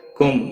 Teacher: میم ساکن کے بعد واو آیا ہے، اس لیے اظہار ہوگا، گنہ نہیں کریں گے۔